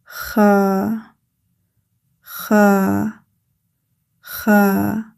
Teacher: Kha Air comes from the upper throat and flows out of the mouth as shown in the above image. Kha is a heavy letter because it is creating a deep full sound. An English comparison similar to kha in Khalid or the ch sound in loch. · produced from the upper part of the throat near the root of the tongue. Kha Air comes from the upper throat and flows out of the mouth as shown in the above image.